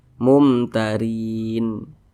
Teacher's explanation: itu namanya izhar syaf dibaca jelas tidak berdengung